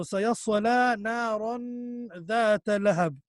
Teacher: So you stretch. You make a sound from the nose, make a nasal sound, slight nasal sound, and you do ikhfa on the tanween.